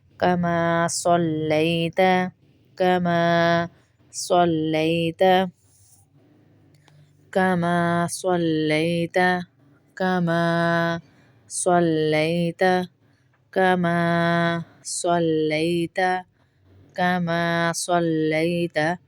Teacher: سلیتا نہیں پڑھیں گے، سین کی آواز نہ آئے۔ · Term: صاد